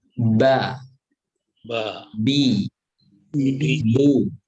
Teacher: Adapun yang mim dan ba, itu dua bibir dirapatkan.